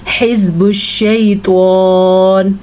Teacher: ہا کے تلفظ کا خاص خیال رکھنا ہے اور توا کو پر کر کے پڑھنا ہے